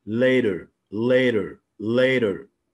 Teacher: والتاء بتتقلب لده خفيف خالص بنسميها flap · والراح ساوند بتتنطق طبعا في الامريكان اكسنت في اي مكان، لكن الراح ساوند في البريتش اكسنت لا تنطق الا اذا جه بعدها vowel.